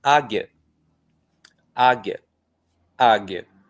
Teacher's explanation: Então acaba sendo uma sílaba só. O I, uma semivogal que é pronunciada bem rapidamente. O U nem é pronunciado, então ele não conta aqui.